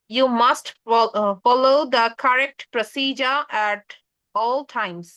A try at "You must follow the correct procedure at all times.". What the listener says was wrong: wonderful,